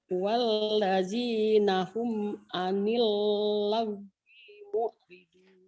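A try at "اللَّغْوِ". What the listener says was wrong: Oh iya, wi-nya pendek. Anil laguimo, anil laguimo, anil laguimo. Pendek ya. Laguimo, laguimo, laguimo, laguimo. Jangan panjang di situ, nggak ada yang panjang.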